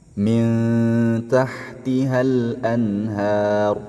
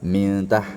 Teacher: ikhfa nun sukun yang dibaca ikhfa samar-samar disertai dengan dengung